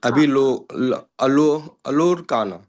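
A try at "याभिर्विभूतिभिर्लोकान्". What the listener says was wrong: ಇಲ್ಲ ನೀವು ಮತ್ತೆ ಅಲ್ಲಿ ಅರ್ಕಾವಳಿ ಹಚ್ಚಬೇಕಿಲ್ಲ ಲೋಕಾನ್ ಅಂತ ಹೇಳಿ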